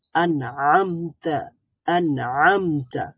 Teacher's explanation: মুখের ভিতরের জিহ্বাটা আমরা সম্মুখ ভাগে মুখের সম্মুখ ভাগে বন্ধ রেখেছিলাম সম্মুখ ভাগ আমরা জিহ্বা দ্বারা বন্ধ রেখে ন সাউন্ড টাকে প্রডিউস করেছি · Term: ইজহার